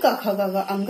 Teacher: स्पर्श व्यंजन में क वर्ग में कंठ से बोला जाता है